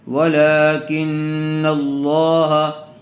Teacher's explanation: لفظ اللہ کی لام کو پر کر کے پڑھیں گے، اس لیے کہ لفظ اللہ کی لام سے پہلے زبر آیا ہوا ہے۔